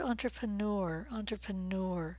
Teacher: but do stress the last vowel sound